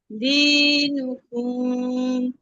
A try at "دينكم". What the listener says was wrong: কুম টান হবে না আপু, কুম টান নাই। কাফ শেষ কুম।